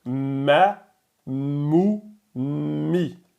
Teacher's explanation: on ferme les lèvres et le son sort aussi des cavités nasales comme pour la lettre noun